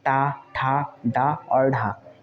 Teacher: ट, ठ, ड और ढ ये जो है मूर्धन्य व्यंजन कहे जाते हैं